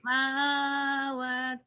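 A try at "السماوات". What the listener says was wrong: kurang. Ma sama wa-nya panjang.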